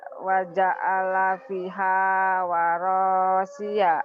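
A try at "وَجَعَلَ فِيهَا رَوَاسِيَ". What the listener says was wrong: Bukan waro, rawa terbalik. Ro dulu baru wa. Waja'ala fiha rawasiya.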